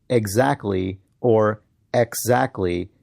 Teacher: we mostly say it exactly or exactly with little or no presence of the T sound